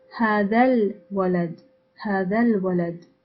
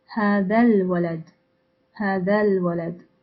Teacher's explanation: So we say هذا الولد, هذا الولد, as if the lam of al-walad is the final letter of hada. Notice al-walad, هذا الولد, هذا الولد.